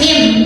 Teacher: bunyi nun sukun yang tadinya an diganti jadi bunyi mim sukun jadi am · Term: iqlab